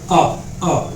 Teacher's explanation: हमारे जो है जीभ के मध्य भाग से हम उसको उच्चारित कर रहे हैं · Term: मध्यस्वर